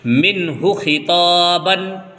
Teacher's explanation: ہا کو کھینچیں گے نہیں، بہت جلدی پڑھیں گے